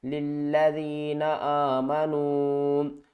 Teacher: چھوٹی مد ہے، اس کو ہم 3 الف کی مقدار کھینچ کر پڑھیں گے